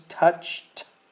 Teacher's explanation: when we have a CH and we say it in the past tense it sounds like a t